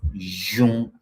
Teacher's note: the palatal labial form of this jye sound